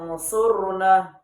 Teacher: Saya ulang, unsurna, dibaca samar-samar. Jadi bunyi nunnya itu tidak terlalu jelas karena disamar-samarkan oleh huruf sod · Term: ikhfa